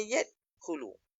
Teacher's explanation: Dia sughra dia. Maksud sughra ni qalqalah yang kecil saja. Seolah-olah lantunan lantunan batu tu kalau kita naik motor tu dia bergegar kecil saja. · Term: qalqalah sukhra